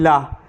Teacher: मुख द्वार मध्य में बंद हो जाता है और हवा दोनों ओर से निकल जाती है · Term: पार्श्विक वर्ण